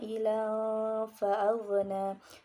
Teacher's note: mad wajib mutasil, dibaca panjangnya yaitu 4 atau sampai 5 harokat